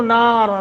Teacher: تمسسہ نار، رک جائیں تو نار، را کے اوپر 2 پیش ختم کر دیں گے، را کو ساکن کر کے پڑھیں گے اور موٹا کر کے پڑھیں گے. ملا کے پڑھیں گے تو نون تنوین پڑھا جائے گا اور پھر یرملون کا قاعدہ بھی یہاں لگ جائے گا اور آپ بہرحال موٹا ہوگا.